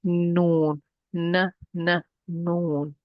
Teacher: I'm going to use the tip of my tongue and place it right at the meeting point of the teeth and the gum line.